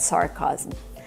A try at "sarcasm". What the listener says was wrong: The word is not pronounced sarcasm. Sarcasm? She means sarcasm. We need the short ass sound like black cat for the second syllable. Chasm. Remember, this word has 3 syllables. Sar, Sarcasm. It looks like 2 syllables, but it's 3. Sarcasm. Not sarcasm, but sarcasm.